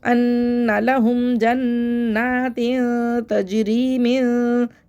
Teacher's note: یہاں پہ ہم اخفا کریں گے، یعنی کہ آواز کو چھپا کے غنے کی آواز ادھوری آواز ہوگی، کہ یعنی آدھا غنہ آدھا اظہار کا طریقہ ہوگا